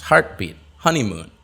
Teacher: where's the stress it's on the first syllable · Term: compound nouns